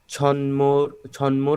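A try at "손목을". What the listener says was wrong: না, ছ না, এখানে ছ কেন হবে, শিয়ত। স।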